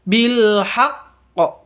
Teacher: Terus haq, ini bacaan qalqalah kubra karena berada di waqaf. Cara bacanya ditahan 2 harokat terus dikeluarkan, diikuti dengan qalqalahnya.